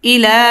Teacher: ইলা খারা জবর আসছে, 1 আলিফ টেনে পড়তে হবে।